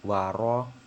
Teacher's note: ro-nya ini itu memiliki hukum bacaan takfim, yaitu tebal ya teman-teman, karena ada huruf ro itu berharokat fathah.